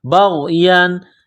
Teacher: بما انزل اللہ بغیا، با کو غین کے ساتھ ملانا ہے، غین جس طرح انسان گلے سے بلغم نکالتا ہے اس طرح اس غین کو نکالیں گے